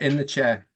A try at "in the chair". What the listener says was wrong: In the chair. It's not in the chair, okay? It's in the chair, okay? There's no R, okay?